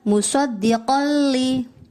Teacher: dibaca idgham bila gunnah karena fathah tanwin bertemu huruf lam